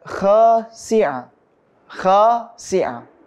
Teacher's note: Kha di sini mengandung mad tabi'i yang panjangnya itu satu alif atau dua harokat.